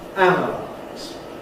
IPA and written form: ˈænəlaɪz (analyze)